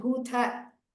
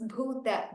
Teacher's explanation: After that, it's not Bhutha. It is Bhuta. The Ta is Alpa Prana.